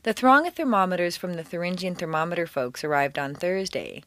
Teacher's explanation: for th the tongue is extended through the teeth instead of hissing behind the back of the teeth